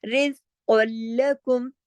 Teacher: لیکن اس را کو ہم باریک پڑھیں گے. کیوں؟ کیونکہ اس را کے نیچے زیر ہے